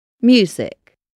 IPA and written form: ˈmjuːzɪk (Music)